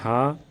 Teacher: ह का उच्चारण करने में स्वर तंत्र में कंपन होने के साथ प्राण वायु मुख द्वारा अधिक मात्रा में निकलती है। इसलिए हा यह सघोष भी है और महाप्राण ध्वनि है।